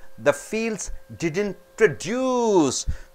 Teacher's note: When you stress on deuce, it becomes a verb.